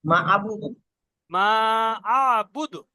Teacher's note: শেষে দাল সাকিন আয়াত হয়ে কলকলা তো হবে। মা আবুদু শেষে কফ ক কলকলা বা মানে জিম ঝাটকা দাল, পাঁচটা অক্ষরের মধ্যে কুতুবু জাদ্দিন হবে কলকলা, আবুদু পাঁচটির মধ্যে দাল জাতিন এসে গিয়েছে, সেই জন্য এখানে কলকলা হবে।